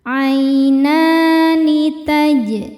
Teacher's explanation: Huruf jim sukun dihukumi qalqalah sughra karena jim sukunnya sukun asli dan ada di tengah bacaan. Cara bacanya dipantulkan dengan pantulan yang kecil.